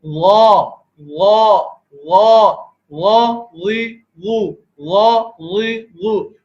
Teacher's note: غا کے اندر حرف جو ہے وہ موٹا پڑا جاتا ہے، تو حلق تنگ، حلق یہاں پر تنگ ہو جایا کرتا ہے اور زبان میں معمولی سا کرو لے کے آتے ہیں.